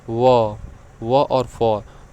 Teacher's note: उच्चारण में ऊपर के दांत तथा नीचे के होठ ठीक है ऊपर के दांत और नीचे के होठ का प्रयोग किया जाता है · जैसे व और फ, जब आप व और फ को बोलेंगे तो आपके जो ऊपर का दांत है और नीचे का होठ क्या हो रहा है, उसको दाब रहा है, तो व और फ क्या हो जाएगा, दंत्योष्ठय हो जाएगा।